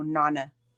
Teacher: It's a long A and then a short A.